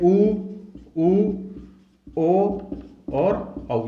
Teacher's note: पश्च स्वर कौन कौन से होते हैं, ऊ, ओ और औ। ये जीभ के पिछले भाग के अनुसार होते हैं।